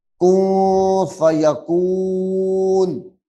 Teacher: یہاں پہ چونکہ اخفاء ہے اس لیے آواز کو چھپائیں گے، نون کی آواز کو